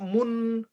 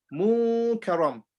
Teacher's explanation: We hide the sound of the noon, but we still do gunna. We still take the sound in our nose.